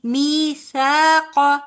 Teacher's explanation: قا کا نہیں لمبا کریں گے، می اور سا کو ایک جتنا لمبا کریں گے